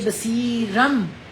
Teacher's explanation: چھوٹی سی بات ہے، آگے با آ جائے گا، اور با جب بھی آئے گا نون تنوین کے بعد اس کی آواز میم میں بدل جائے گی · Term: اقلاب